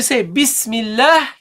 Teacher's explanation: But when you say Bismillah, you don't pronounce the Hamza. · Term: Hamzat al-Wasl